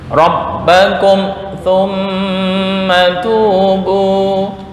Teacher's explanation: Jangan dengung. Mim mati bertemu sa ya. Mim mati bertemu sa itu izhar syafawi.